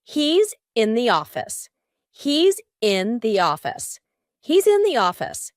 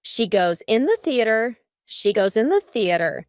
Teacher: In each of these words, the S becomes a Z.